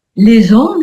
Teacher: les hommes, c'est un ha muet. Donc on fait la liaison.